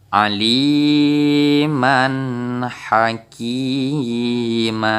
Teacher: Jadi di sini kita baca ma panjang dua harakat seperti panjang mad tabi'i. Contoh selanjutnya, aliman hakima.